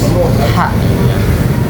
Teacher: huruf ha ini ke sifatnya itu lembut dan berhembus ha, itu termasuk ke akustik.